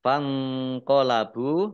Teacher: nun sukun bertemu dengan huruf qaf. Bacaan ikhfa dibaca samar-samar. · Bacaan ikhfa dibaca samar-samar. Ba'domah wawu sukun mat tabi'i 2 harokat